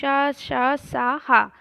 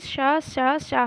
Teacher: वे वर्ण जिनके उच्चारण में निकलने वाली वायु जीवा तथा उच्चारण स्थानों के मध्य घर्षण करती हुई या रगड़ती हुई बाहर निकलती है, उन्हें हम ऊष्म व्यंजन कहते हैं।